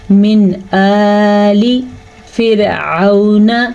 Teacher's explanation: را باریک پڑھی جائے گی کیونکہ را ساکن ہے اور پچھلے حرف کے نیچے زیر ہے، اس لیے یہ را ہم باریک پڑھیں گے.